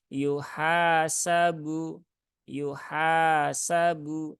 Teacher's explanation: Ada Alif maka ini dibaca panjang dua harakat · Kemudian yuhasabu ya, haknya ada alif, maka ini dibaca panjang 2 harokat. Yuhasabu, yuhasabu, nah, gitu ya.